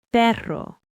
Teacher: two Rs together, the double R, are strong and rolled. >> Perro dog.